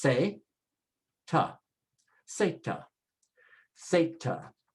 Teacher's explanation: There is no Z sound in Spanish. It's only an S sound.